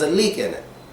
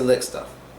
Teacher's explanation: But when you're saying lick, you don't want to put so much stress on the I and the word is shorter